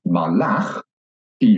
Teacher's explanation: you can hear that the stress is at the end of the word